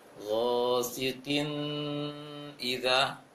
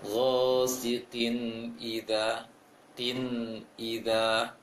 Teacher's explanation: untuk hak nun harus nampak, tidak terpantulkan dan juga tidak dengung